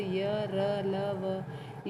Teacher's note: इन व्यंजनों का उच्चारण करते समय, इन्हें बोलते समय वायु को कुछ रोककर अल्प शक्ति के साथ इनका उच्चारण किया जाता है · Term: अंतस्थ व्यंजन